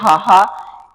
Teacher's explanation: ਉਚਾਰਨ ਸਥਾਨ ਆ ਉਹ ਸਾਡੀ ਘੰਡੀ ਆ। ਜਿਹਦੇ ਵਿੱਚ ਮਤਲਬ ਕਿ ਹਵਾ ਸਿੱਧੇ ਰੂਪ ਦੇ ਵਿੱਚ ਰੋਕੀ ਨਹੀਂ ਜਾਂਦੀ ਹੈਗੀ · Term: ਸੁਰਜੰਤਰੀ ਧੁਨੀ